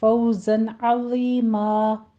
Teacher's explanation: अज़ीमन है आगे तो आइन को वस्ते हलक से अदा करना है, वा को नरमी से पढ़ना है, यहाँ पे सीटी की आवाज़ नहीं आनी चाहिए और ये पोर पढ़ा जाएगा। आगे तनवीन का कायदा फ़तहतैन तो यहाँ पे वक्फ़े इब्दाल कर देंगे, 2 काउंट करना है